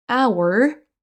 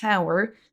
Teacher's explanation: on ne prononce pas le H